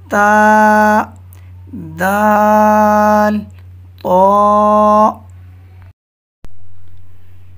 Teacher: یہ حروف زبان کی نوک اور اوپر کے دانتوں کی جڑ سے ادا ہوتے ہیں۔ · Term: حروف نطعیہ